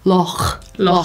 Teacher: When you say loch, loch, you have to use the back of your throat and kind of breathe into it